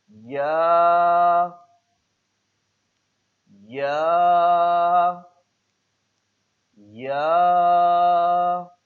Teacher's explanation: زبان کا بیچ جب تالو کے بیچ سے لگے